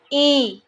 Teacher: ई में हमें मुंह खोलने की जरूरत नहीं है बहुत कम खुलेगा